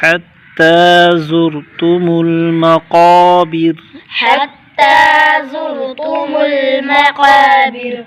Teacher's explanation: حتی، تا پر کھڑا زبر، ایک الف کھینچنا ہے، اس را کو موٹا کرنا ہے، را ساکن سے پہلے پیش ہے اس لیے موٹا کرنا ہے۔ قاف پر الف مدہ اور قاف مستعلیق حرف موٹا کر کے پڑھیں گے۔